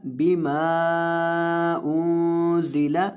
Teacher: मीम के साथ ये अलिफ है और इसके बाद आगे हमज़ा है, इसको लंबा करेंगे 3 अलिफ के बराबर। अगर 1 अलिफ के बराबर करेंगे तो फिर भी ठीक है, अगर 3 अलिफ के बराबर करें तो बेहतर है, अगर ना करें तो ज़रूरी नहीं है। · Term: मद जायज़